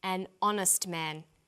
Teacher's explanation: the H is not pronounced so honest sounds like it starts with a vowel